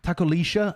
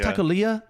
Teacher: double L is a sh sound in like some places